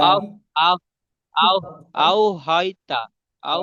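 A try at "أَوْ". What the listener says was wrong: আপনি হাই হুতাশ হয়ে যাচ্ছেন। অত হাই হুতাশ হলে হবে না, একদম ধীর ভাবে। অত স্পিড ভাবে পড়লে হবে না, ঠান্ডা মাথায় ঠান্ডা ইমোশনে পড়তে হবে।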